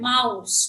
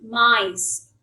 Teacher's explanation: the word mouse, which has the vowel sound, the diphthong ow, it changes to I